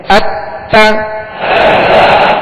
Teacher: تا کی زبر جب ادا کریں گے آواز اور منہ کھولیں گے اور اس کو کھینچیں گے بھی نہیں، کیونکہ حرکات کی ادائیگی کا درست طریقہ یہی ہے کہ بغیر کھینچے بغیر جھٹکا دیے معروف پڑھیں گے۔